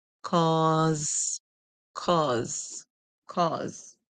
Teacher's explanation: Remember, whenever S come before E, or after I, you can hear the S making a sound like Z in most cases. So you hear Z and the E would be silent.